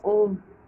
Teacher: इसे त्रिमात्रिक स्वर कहते हैं, इसके उच्चारण में 3 गुना समय लगता है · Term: प्लुत स्वर